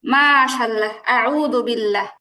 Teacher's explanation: আল্লাহ শব্দের লামকে পাতলা করে পড়তে হয়